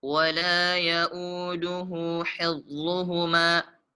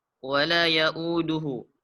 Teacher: Pada kata ya'uduhu di situ dibaca 2 harokat. Karena ada hal dhamir berharokat dhammah dan setelahnya tidak pula huruf hamzah. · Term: mad silah sughra